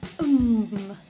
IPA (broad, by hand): ŋ